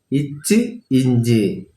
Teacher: நாவின் இடை அன்னத்தின் இடையில் பொருந்துவதால் பெறக்கூடிய எழுத்து.